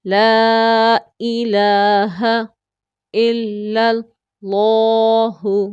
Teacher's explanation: لفظ اللہ کا لام پر کر کے موٹا کر کے پڑھیں گے، کیونکہ اس سے پہلے لیٹر پر زبر آ گئی ہے، اور یہ قاعدہ ہے تجوید کا کہ جب اللہ لفظ اللہ کے لام سے پہلے زبر ہوگی تو وہ موٹا اور پر پڑھیں گے۔